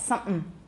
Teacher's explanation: we have nasal occlusion there, and it's bilabial.